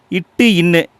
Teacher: இந்த 2 எழுத்துக்களும் நாக்குடைய நுனி அன்னத்துடைய நுனியை தொடுவதால் உருவாகுது.